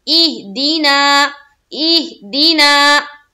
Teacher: हा हुरूफ़े कलकला में से नहीं है, तो यहाँ पर हम कलकला नहीं करेंगे, आवाज रुक जाएगी